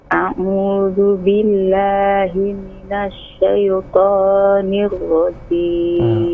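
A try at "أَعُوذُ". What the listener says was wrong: Jangan tapi a. Coba buka a. Aku, seperti kita bilang aku. Itu a'u, bukan masuk hidung ya. A'udzu billah, diulang.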